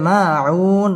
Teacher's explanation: মধ্যে আরজি তিন আলিফ টান দিয়ে ওয়াকফ করতে হবে